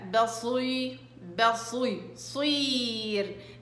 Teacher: الياء ملهاش دعوة بكسرة الصاد، الصاد بدها تطلع مفخمة حتى وهي مكسورة